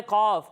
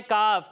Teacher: جب ہم قاف کی ادائیگی کریں گے تو اسے پر پڑھیں گے اور کاف کو ہم باریک پڑھیں گے